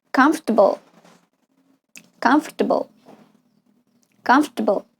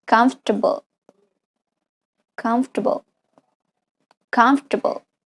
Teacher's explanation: The OR after F could be pronounced with a schwa sound.